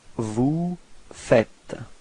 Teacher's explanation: Logically we could put this vous faisiez, but then no, it's vous faites. Okay, keep in mind that final S is not pronounced